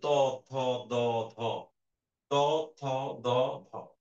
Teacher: তোমার জীভের আগাটা তোমার দাঁতের সাথে গিয়ে দেখ একটা স্পর্শ লাগছে ত উপরের দাতে খেয়াল করে দেখ উপরের পার্টের পিছনে গিয়ে তোমার জিবটা টাচ হচ্ছে। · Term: দন্ত ধ্বনি